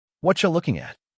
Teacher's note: The t sound often takes on a ch quality, and the are and you compress. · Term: whatcha